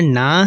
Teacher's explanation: نون کی آواز ہم اپنے منہ سے ادا کریں گے، ناک سے ادا نہیں کریں گے